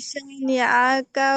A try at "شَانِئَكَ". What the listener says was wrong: শানিআকা। হামজা ঠিক করে উচ্চারণ করেন, শানিআকা।